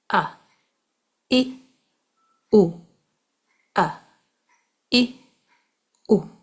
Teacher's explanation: आप अपनी सांस रोके। आप अपनी आवाज भी रोके। फिर अचानक से सांस लिए बगैर हमजा को अदा करें।